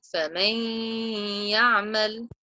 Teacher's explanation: I'm joining the mim zabar to the ya shadda, and I'm nasalizing the noon.